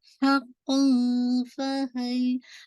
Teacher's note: اب آپ نے لائٹ اخفا کرنا ہے کیونکہ تنوین کے بعد فا ہے جو کہ لیٹر اخفا میں سے نا، تو آپ نے لائٹ کرنا.